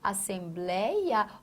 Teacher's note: ditongo aberto numa palavra paroxítona